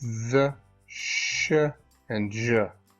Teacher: you have a very tight passage where air can go through and in this tight passage friction occurs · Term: fricatives